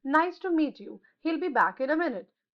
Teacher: Falling intonation. इसका meaning होता है pitch of the voice fall करती है at the end of sentence पर